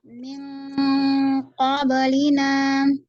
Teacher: ming NG, kemudian naikkan pangkal lidah. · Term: Ikhfa